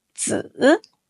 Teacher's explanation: To pronounce 子, first, keep your tongue flat at the bottom of your mouth, gently touching your lower teeth. Second, say it with the third tone. Start low, dip lower, then rise softly